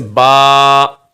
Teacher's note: 1 الف کی لمٹ اتنی ہوتی ہے جیسے کہ آپ مٹھی بند کریں اور مٹھی کھولیں، یعنی مٹھی بند کرنے میں اور مٹھی کھولنے میں کتنا ٹائم لگتا ہے، اتنا ٹائم 1 الف کا ٹائم ہوتا ہے۔ تو آپ کو با جو ہے 1 الف کے ٹائم کے برابر کھینچنا ہے